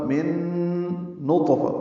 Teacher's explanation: نون ساکن کے بعد نون آنے کی وجہ سے ادغام ہوا ہے، غنہ ہوگا